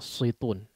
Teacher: Sin ini tipis ya. Sebetulnya sama dengan huruf shad pengucapannya. Bedanya tebal dan tipisnya. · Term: huruf sin